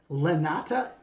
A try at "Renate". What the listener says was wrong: No, Renata with an R. Nata. Well, in German it's Renate, but nobody in America can say that. They call me Renate. That's why I tell them Renata. You can say Renate. Renate.